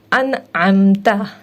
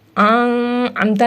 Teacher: اسے ہم اس طرح سے پڑھیں گے، انعمتا، امتا نہیں پڑھیں گے، نون کو ہم اخفا نہیں کریں گے بلکہ ہم اس کو ظاہر کر کے پڑھیں گے